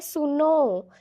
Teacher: हमने सुनो ऐसे पूरा खींच दिया उस आवाज़ को, उसमें 3 मात्राओं का समय लगता है